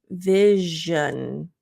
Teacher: it's a similar mouth placement as sh but there's a vibration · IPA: /ʒ/